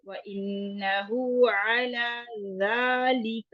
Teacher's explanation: ذا کے لیے زبان کو تھوڑا باہر نکالتے ہوئے اوپر والے دانتوں کے کناروں کو لگانا ہے